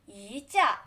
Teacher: You need to pronounce E to second tone. 一架 and here because so is flat tone, so the E become fourth tone.